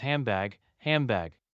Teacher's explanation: But usually in quick speech, handbag becomes handbag, handbag. The D is omitted and the N modifies to a lip together sound M to make it easier. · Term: assimilation